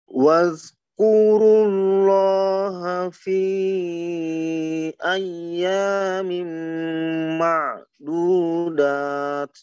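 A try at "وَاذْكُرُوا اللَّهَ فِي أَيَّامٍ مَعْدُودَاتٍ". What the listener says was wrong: Bunyi zal jangan ke zai, jangan waz.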